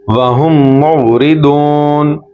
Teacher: پہلا میم دوسرے میم کے ساتھ مکس ہو رہا ہے، اور غنہ کریں گے، ناک سے آواز نکالیں گے